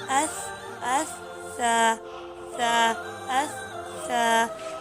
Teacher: ये ज़ुबान की नोक जब ऊपर वाले और नीचे वाले दो दांतों के दरमियान आ जाती है तो अदा होता है सा। इसको भी हम अदा करेंगे इसके पीछे हमज़ा लगा के, अस सा सा अस सा, नरमी से।